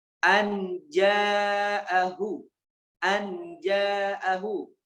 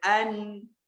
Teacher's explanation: membacanya sedikit kita dengungkan dan juga kita samarkan bunyi nunnya